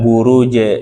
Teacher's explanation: Tengah lidah menempel ke langit-langit atas pada huruf jim. Tengah lidah ini sisi 1, langit-langit atas sisi 2.